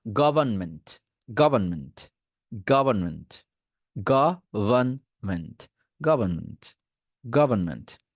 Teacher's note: আচ্ছা, গভর্নমেন্ট বলি, এই গভর্নমেন্ট উচ্চারণ করতে গিয়ে আমাদের অনেকে প্রবলেম হয়, এইটার মধ্যে আরটাকে বাদ দিয়ে দেন, জাস্ট আরটাকে বাদ দিয়ে দেন উচ্চারণের সময়।